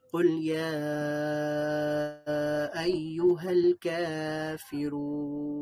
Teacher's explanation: ইয়াটা যখন আমরা টান দিব তখন আমাদের এখানে 3 আলিফ টান দিতে হবে। এখানে 3 আলিফ টান দেওয়ার চিহ্ন রয়েছে, এবং কা এর মধ্যে 1 আলিফ টান হবে, আর রু এর মধ্যে 3 আলিফ টান হবে।